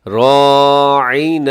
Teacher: راعینا، راعینا، اسے رائنا نہ پڑھیے گا، تھوڑا سا یہاں پہ آپ نے زور لگا کے اس کو عین کرنا ہے. یہاں پر آپ نے تھوڑا سا کوشش کر کے اس کو حمزہ ہونے سے بچانا ہے اور عین کی طرح پڑھنا ہے